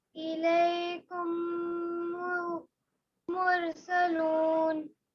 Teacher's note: میم ساکن ہے، اس کے بعد پھر سے میم ہے، تو میم ساکن کے بعد اگر میم آتا ہے تو دونوں میم کو ایک ساتھ ملاتے ہیں اور غنہ کرتے ہیں۔